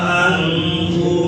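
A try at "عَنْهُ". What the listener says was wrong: Anhu atau anhu? Oke, ain wa hamzah. anhu pakai ain. Anhu. Anhu.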